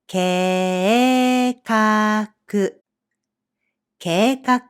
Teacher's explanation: Again, the vowel sequence [e-i] here becomes [e-e] in pronunciation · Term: long vowel